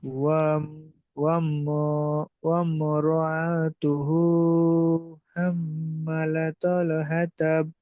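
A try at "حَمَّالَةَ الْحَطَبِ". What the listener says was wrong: হাম্মা টান নেই কি? হাম্মা।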